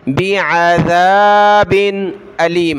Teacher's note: वबश्शिरिल्लज़ीन कफ़रू बिअज़ाबिन अलीम, आइन को गले से निकालें, ज़ाल पर ज़बान निकालनी है, बिअज़ाबिन अलीम, हमज़ा ज़बर अ, लाम या ज़ेर ली, अली मीम दो ज़ेर मिन, अलीमिन, जब रुकेंगे वक़फ़ करेंगे तो अलीम।